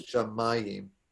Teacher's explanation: the accent is on the second to last syllable for this word